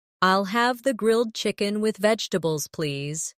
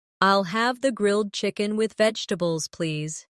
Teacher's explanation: The main stress is on grilled chicken and vegetables.